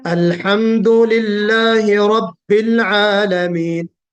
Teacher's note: نہ لام کے اندر شدت ہو شدت کی وجہ سے، نہ لام کے اندر نرمی ہو رخوت کی وجہ سے، بلکہ یہ درمیانی کیفیت ہو